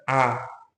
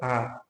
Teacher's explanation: विवृत जिसमें मुख द्वार पूरा खुले।